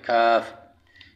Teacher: قاف کے مخرج ہٹ کر منہ کی جانب یہ کاف ادا ہوتا ہے